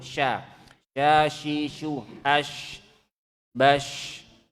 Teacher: Sya itu bunyinya tentu beda dengan sin ya, anginnya lebih banyak. Angin bertebaran di mulut.